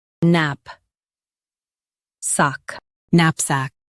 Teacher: Stress NAP and keep sack clear.